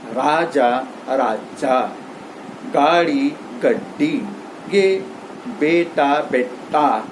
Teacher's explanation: खड़ी बोली में बोलते समय दीर्घ स्वर के बाद में द्विव्यंजन आ जाता है